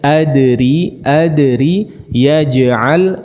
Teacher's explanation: Dipantulkan tapi kemudian jangan dijeda, ya. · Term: qalqalah